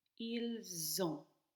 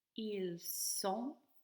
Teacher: you understand there's a Z sound in there as opposed to an S.